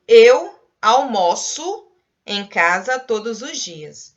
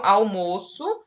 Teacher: a palavra teve uma pronúncia do O mais fechadinho